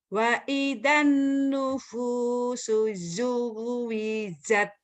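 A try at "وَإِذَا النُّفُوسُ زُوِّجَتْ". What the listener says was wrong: Zainya rapuh. Wa idzan nufusu zuwijat. Jatnya keras. Zuwijat. Zuwijat. Zaitun. Zainab. Zuwijat. Bedakan. Zu sama jat beda. Zu, zai, jat, jim. Jakarta, Persija, jat.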